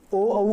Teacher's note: ओ औ का उच्चारण स्थान क्या है? कंठ और ओष्ठ दोनों है, कंठोष्ठ।